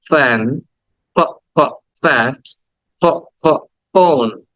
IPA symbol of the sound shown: f